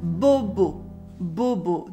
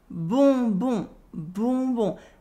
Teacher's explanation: Now you're going to move the vowel O to your nose, so that bobo, bobo becomes bonbon, bonbon.